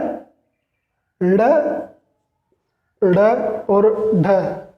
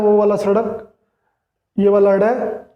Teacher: ताड़नजात एकदम जीभ ऊपर तालु के झटका मारती है, इसलिए इन्हें हम ताड़नजात कहते हैं